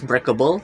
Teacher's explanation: The suffix is able. The stress is on the first syllable break and the able does not shift stress. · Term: stress preserving suffix, stress-preserving suffix